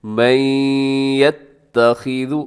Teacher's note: ادغام بھی غننے کے ساتھ، یعنی آواز ناک میں جائے گی